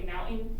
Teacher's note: So they're I went skiing and then they'll say mountain instead of they'll kind of glottal over the NT of mountain